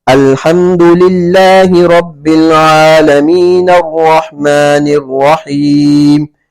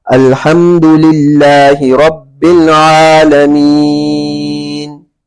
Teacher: عالمین پر اگر ساکن نہیں کریں گے اور عارضی سکون نہیں کیا جائے گا تو یہاں پر مد نہیں ہوگا